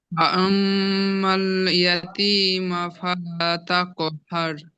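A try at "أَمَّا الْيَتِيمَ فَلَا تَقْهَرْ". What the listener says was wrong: ফালা, এটা আলিফ মাদ্দা আছে, টান হবে তো? টান হবে তো?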